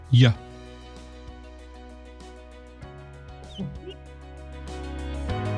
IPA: j